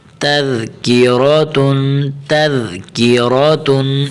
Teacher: یہاں حرف ذال کو بالکل باریک کرتے بالکل نرم سا آرام کے ساتھ پڑھنا ہے. تذکیرہ یہاں زا کی آواز نہیں نکلنی ذال کی اپنی آواز ہوتی ہے اپنے ہی لہجے میں تو پڑھنا ہے.